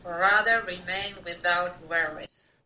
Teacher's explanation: I can hear that you are really stretching out those W's to pronounce that nice and clearly